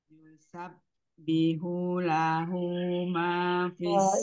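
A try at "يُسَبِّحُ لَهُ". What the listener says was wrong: yusabbihu jangan panjang ya yusabbihu lahu Tinggal dikuatkan lagi sifat sopirnya. Jadi sin, kemudian zai, dan sod itu ada sifat sopir.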